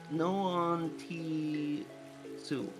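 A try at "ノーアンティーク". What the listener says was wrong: Nope, that's not su. You got the right vowel, different consonant. It is ku. On t. No, antique.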